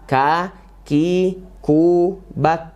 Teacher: Kalau dia sukun itu ada mengalir nafasnya sedikit ya. · Huruf K makronya adalah yaitu di pangkal lidah ya. K pangkal lidah ya, menempel ke langit-langit atas kita.